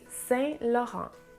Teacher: we don't hear the T's nor the N's at the end of both words